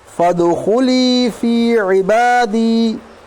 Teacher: तो यहाँ अलिफ नहीं पढ़ा जाएगा, फ़ा सीधा दाल के साथ मिलेगा